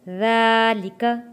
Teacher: ذال کو نرمی کے ساتھ پڑھیں گے اور ذال کے اوپر کھڑی زبر ہے، 1 الف کے برابر کھینچ کر ہم نے پڑھنا ہے